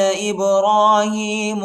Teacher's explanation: وَإِذْ قَالَ إِبْرَاهِيمُ رَبِّ اجْعَلْ هَٰذَا بَلَدًا آمِنًا وَإِذْ قَالَ إِبْرَاهِيمُ حمزہ کو با کے ساتھ ملائیں گے، با کو جٹکے کے ساتھ پڑھیں گے، با پر قلقلہ کریں گے، حروف قلقلہ کا حرف ہے، ٹھیک ہے۔